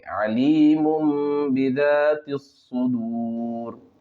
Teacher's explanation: پیش سو دال واو را پیش دور صدور علیم بذات الصدور۔ اقلاب کا قاعدہ ہوگا اس لیے کہ دو پیش کی تنوین کے بعد با ہے، نون کو میم سے بدل کر پڑھیں گے